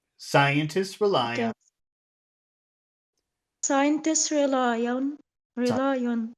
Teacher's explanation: I'm going to emphasize rely